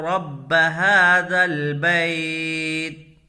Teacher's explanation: را کو پر پڑھیں گے، اس لیے کہ را کے اوپر زبر ہے، اور جب را کے اوپر زبر یا پیش ہو تو را کو پر پڑھیں گے۔